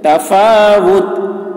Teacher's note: تا ساکن ہو جائے گی, یہ تنوین نہیں پڑھی جائے گی